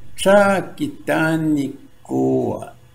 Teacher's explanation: effectively you're holding the K sound just a little bit longer before you release it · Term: double K